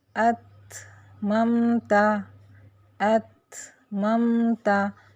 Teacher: اسی طرح تا میں اتممتا اتممتا، تو یہاں کیا ہوا، تا کی آواز پہلے بند ہوئی اور پھر تھا کی ساؤنڈ آئی